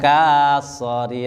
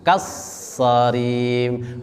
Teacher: Tadi tulisannya K-nya panjang, tapi ada shad yang ditasdid sehingga panjangnya tidak dibaca, langsung kas ya, bukan kasari tapi kassarim.